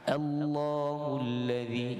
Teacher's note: kita panjangkan lam yang kedua